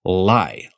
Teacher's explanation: In English, when we say a word like lie, the back and front of your tongue both come up towards the roof of your mouth.